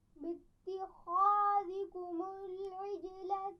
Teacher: باتخاذکم خا کو موٹا پڑھنا ہے